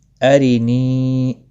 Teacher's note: را زبر کی وجہ سے پر پڑھا جائے گا، ربی ارینی، را زیر کی وجہ سے باریک پڑھا جائے گا، نی یا مدہ ہے، ایک الف کے برابر کھینچ کر پڑھیں گے